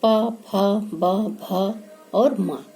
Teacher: तो इतने वर्ण जो हैं, पूरा पवर्ग जो है वो ओष्ठ से बोला जाता है